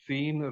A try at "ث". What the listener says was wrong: سا سین نہیں، سا، سا را، ٹھیک ہے؟